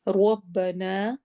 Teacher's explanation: رو کو موٹا پڑھنا ہے، نا میں 2 حرکہ، 2 کاؤنٹ ہم اس کو لمبا کریں گے۔